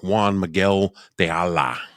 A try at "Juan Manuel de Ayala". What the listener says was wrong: That was I don't see a G in there anywhere, but You didn't, but you said a G. Miguel.